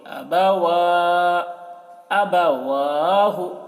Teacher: ہے، زیر ہے، پیش ہے، اس کو جلدی پڑھ رہے ہیں، جہاں پر کھڑا زبر ہے اس کو کھینچ رہے ہیں ، تو واو میں کھڑا زبر، واو کو کھینچ رہے، ابوا،